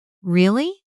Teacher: Really? With a warm, rising tone invites the speaker to continue. Really? With a flat tone can sound doubtful.